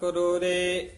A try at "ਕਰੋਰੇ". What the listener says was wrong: ਕਰੋਰੇ ਰਾਰਾ ਪੂਰਾ ਨਹੀਂ ਬੋਲਣਾ। ਕਰੋਰੇ ਕੋਟ ਜੋਰੇ ਲੱਖ ਕਰੋਰੇ ਮਨ ਨਾ ਹੋਰੇ।